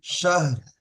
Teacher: লাস্টে রটা হালকা উচ্চারণ হবে, ঠিক আছে? শাহর, সাল শার বলবেন না, শাহর।